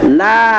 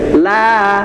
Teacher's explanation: La ya, itu satu ayunan untuk 2 harokat. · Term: mad tabi'i